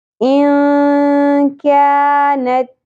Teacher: کیونکہ یہاں پر نون ساکن کے بعد آ رہا ہے حروف اخفا میں سے کاف، تو یہاں پر ہم نے اخفا کرنا ہے، نون کی آواز کو چھپاتے ہوئے پڑھنا ہے مع الغنہ، یعنی کہ آواز کو ہم نے ناک میں ٹھہرانا بھی ہے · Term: اخفا مع الغنہ